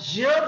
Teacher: ज चा उच्चार होताना घर्षण पण आहे आणि स्पर्श पण आहे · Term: स्पर्श संघर्षी